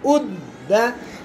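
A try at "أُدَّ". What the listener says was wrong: अब जैसे पहले आप ही ने पढ़ा ना उद, वो सही था लेकिन शब्द की वजह से अब सख्ती करनी थी तो वो गलत था।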